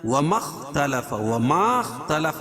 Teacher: الف لکھی لیکن یہ الف پڑھی نہیں جائے گی